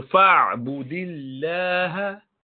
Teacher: Here, lamb of Allah is not pronounced with elevation of the tongue. Why? Because the letter before it has a كسرة.